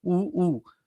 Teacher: तोंड गोल होतं, वाटोळं होतं ओठ. ओठ थोडेसे असे गोल टाइप होतात. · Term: औष्ठ्य